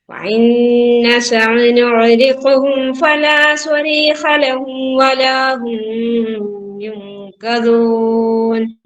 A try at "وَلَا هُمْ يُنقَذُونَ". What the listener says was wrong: വലാഹും അവിടെ മണിക്കൂല. മീമിന്റെ മുകളിൽ സുക്കൂന്റെ അടയാളല്ലേ, അപ്പൊ പിന്നെ മണിക്കൂല.